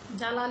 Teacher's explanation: জ্বালা লিখতে গেলে আমরা জয়ের নিচে বহলা দিচ্ছি, কিন্তু সেই বয়ের কোনো রকম প্রভাবই এখানে থাকছে না